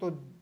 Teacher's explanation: के देख लीजिए प या त त बोल के देखोगे तो जीभ है वह दांतों को स्पर्श करती है